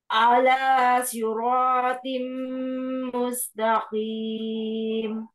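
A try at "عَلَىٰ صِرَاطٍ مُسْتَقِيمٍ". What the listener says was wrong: Ain. Ala. Ainnya jangan panjang. Ainnya pendek.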